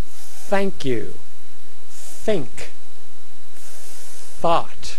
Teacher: the voiceless th at at the beginning of the word